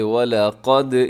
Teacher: اس میں واو باریک، لام باریک اور قاف موٹا پڑھا جائے گا۔ قاف ہمیشہ موٹا پڑھا جاتا ہے۔